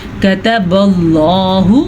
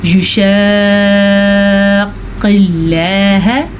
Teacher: یہ اللہ کا نام پر ہے کیونکہ اس سے پہلے پیش ہے۔ البتہ یہ والا اللہ کا نام باریک ہے کیونکہ اس سے پہلے زیر ہے۔